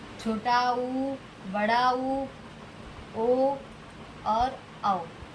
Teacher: होठ की आकृति वृत्त के जैसे हो जाती है, वृत्त के समान होती है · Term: वृत्ताकार स्वर